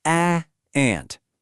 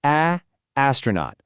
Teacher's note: There's no schwah, no weird intro, just that pure vowel sound.